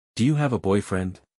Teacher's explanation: you have a boyfriend seis sílabas Do you have a boyfriend acentuación en la quinta sílaba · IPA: du jʊ hæv ə ˈbɔɪˌfrɛnd?